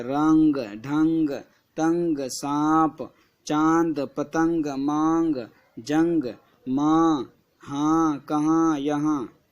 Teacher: نون گنا جس کی آواز ناک میں آواز آتی ہے